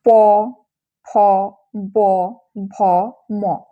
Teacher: দেখো এই 5টি উচ্চারণ করার সময় আমরা কিন্তু দুই ঠোঁট দিয়ে ব্যবহৃত হচ্ছে, দুটো ঠোঁট দিয়ে উচ্চারণ হচ্ছে, সেজন্য এগুলোকে বলা হয় ওষ্ঠধ্বনি